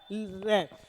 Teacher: इसे प्रकंपित इसलिए कहा क्योंकि रे के उच्चारण में जीभ का अग्रभाग वाइब्रेट करता है, कंपन करता है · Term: प्रकंपित या लुंठित